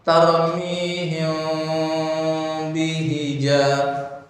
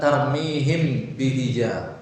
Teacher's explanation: Memang dia di khaisum juga, tetapi bibir ikut berpengaruh, yaitu bibir atas dengan bibir bawah tidak tertutup rapat. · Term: ikhfa syafawi